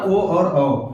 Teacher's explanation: ये दो वर्ण हो जाएंगे कंठ और ओष्ठ से उच्चारित किए जाएंगे। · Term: कंठोष्ठ